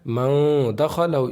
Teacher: इख़फ़ा की आवाज़ को नाक में छुपा करके पढ़ना है, नून की आवाज़ को